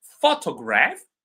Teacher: Photograph the stress is on the first syllable.